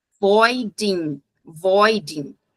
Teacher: eu não vou pronunciar esse G no final da palavra. Eu corto, igual uma guilhotina ali, vai cair no N.